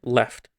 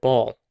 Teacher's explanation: The tip of your tongue is placed in the same area in both instances, but the back of the tongue is shaped differently. · a light L would be the word left, whereas a dark L would be the word ball. It's kind of hard to hear the differences if you don't know what you're looking for.